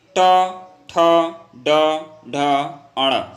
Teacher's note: जो हमारा जीभ होता है तलवे पे जाके सटता है, तो इसको हम लोग क्या बोलते हैं, मूर्धा बोलते हैं।